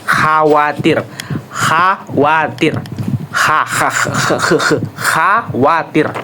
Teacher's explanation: Nah, saat ada sedikit celah gesekan, udara keluar. Bunyi gesekan dari belakang tenggorokan, seperti bunyi dalam bahasa Arab seperti yang saya bilang tadi ya. · belakang lidah mendekati, tidak menyentuh penuh langit-langit lunak. Jadi dia tidak menyentuh seperti kasus seperti S tadi, dia tidak menyentuh bagian langit-langit lunak. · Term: frikatif dorsovelar tak bersuara